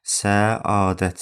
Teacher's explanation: Səadət a səsi uzanır. Amma uzanma.